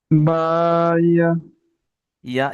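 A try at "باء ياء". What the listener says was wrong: ইয়াটা একালিপ টান হবে, মানে একটু এক লেখা রয়েছে যে ইয়া।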